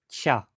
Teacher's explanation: um K, antes de uma vogal anterior, palatalizou primeiro para uma oclusiva palatal K, e depois provavelmente foi africando para algo como Tcha